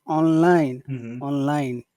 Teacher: it seems like both syllables are accented